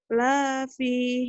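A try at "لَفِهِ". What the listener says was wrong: Salah, lanya pendek. Semua pendek.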